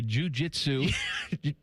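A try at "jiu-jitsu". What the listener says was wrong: The way you said that is not jujitsu. Jujitsu. Don't take a pause right there, tidy whiteys.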